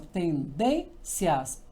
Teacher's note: Porque quando eu falo assim, tendências, o I é semi e o A é vogal. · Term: tom crescente